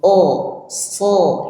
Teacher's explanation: Maka bunyinya kalau tebal harus mengangkat pangkal lidah. Ya, jadi pangkal lidahnya diangkat, kemudian tercipta ruang ya, ruang di antara langit-langit atas mulut dengan lidah setelah bagian pangkal. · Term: isti'la